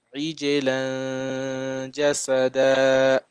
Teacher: So you have to stop with the alif, right? The alif mad and one fatha. So it has to be 2 seconds, right?